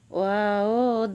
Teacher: ওয়াও দুই ঠোঁটের মাঝখানের ফাঁক থেকে আদায় হবে